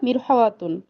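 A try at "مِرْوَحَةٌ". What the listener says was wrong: মিরওয়াহাতুন, মিরওয়াহাতুন, মিরহাওয়াত বলেন কেন? আবার বলেন না, তিনবার বলেন না। মিরওয়াহাতুন, মিরওয়াহাতুন।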